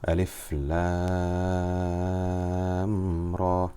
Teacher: Notice Ra was only stretched for 2 harakat because it is one of the Hayyun Tahar letters.